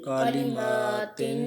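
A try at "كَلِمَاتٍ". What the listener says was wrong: کالی نہیں کرنا، کلی کلمات،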